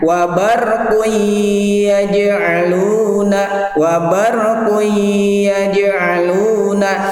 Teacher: Jadi kuinya itu agak lama, ada gunnahnya.